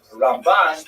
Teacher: Ramban is pronounced with the emphasis on the second syllable.